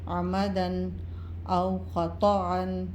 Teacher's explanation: دو زبر کی تنوین کے بعد حروف ہلکی میں سے حمزہ آ رہا ہے تو غنہ نہیں کریں گے، صرف اظہار ہوگا